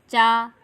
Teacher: और चा वर्ग के उच्चारण का, चा वर्ग के व्यंजन के तालु से बोलते हैं। चा, तो चा जब बोलते हैं तो हमारी जीभ जो है वह तालु में टच करती है, इसकी आवाज़ तालु के माध्यम से आती है।